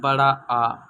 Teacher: बड़ा आ जो जीभ के पिछले भाग से बोला जाता है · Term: पश्च स्वर